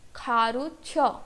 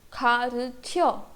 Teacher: और क्योंकि last syllable हमारा वॉवल से एंड हो रहा है तो ई और अ मर्ज हो जाएंगे और क्या बन जाएगा? य.